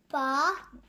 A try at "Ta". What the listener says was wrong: C'est pas un pas, c'est un T. Vas-y.